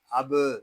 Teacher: حمزہ با زبر اب، یہاں با ساکن ہے، اس میں کلکلا کریں گے